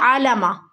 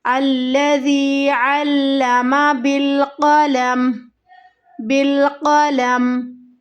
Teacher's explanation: عین کو لام کے ساتھ مضبوطی کے ساتھ ملانا ہے، سختی کے ساتھ